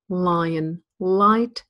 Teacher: The light L tends to be used at the beginning of words like lion and light, and Americans tend to always use the dark L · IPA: /ɫ/